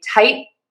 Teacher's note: there's the air is not popping out at the end, but we're marking the T by kind of keeping the tongue in the spot where we would usually make a Tight. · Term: unreleased T